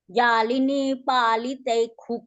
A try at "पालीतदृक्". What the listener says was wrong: तुम्ही पालीतक म्हणताय तस नाही पालीत दक अस म्हणा